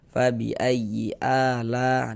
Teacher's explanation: Kemudian a ini dipanjangkan dengan dua harakat namanya adalah mad badal.